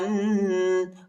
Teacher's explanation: لام کو شدت کے ساتھ سختی کے ساتھ پڑھیں گے